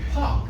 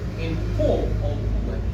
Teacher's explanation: So in park it's aspirated. In poor or poor it's aspirated.